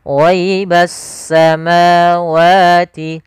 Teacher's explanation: Alif lam syamsiyah adalah alif dan lam yang dia ditulis tapi dia tidak dibaca huruf lamnya. sehingga langsung diidghamkan ke huruf setelahnya yaitu huruf sin, sehingga langsung di huruf sinnya bertasydid, ghaibassa. · pada lafal ma wa ini ada mad tabi'i. Kita panjangkan sepanjang dua harakat.